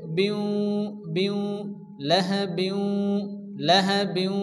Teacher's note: লাহাব, লাহাবিন, এখানে বা নিচে 2 জের এসছে, অর্থাৎ তানবিন এবং নুন সাকিনের পরে যদি হরফে ইদগামের মধ্যে ইউমিন, ইয়া ওয়া মিম নুনের মধ্যে কোনো একটি অক্ষর যদি আসে, তাহলে কি হয়? তানবিন এবং নুনের সঙ্গে মিলিয়ে 1 আলিফ গুণনা করে পড়তে হয়